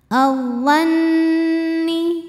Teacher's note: Kemudian ada hukum alif lam yang dinamakan dengan alif lam syamsiyah. Karena alif lam menghadapi huruf syamsiyah yaitu dha, maka alif lamnya tidak kita baca atau biasa disebut dengan idgham syamsi.